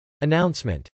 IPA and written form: ənˈɑʊnsmənt (announcement)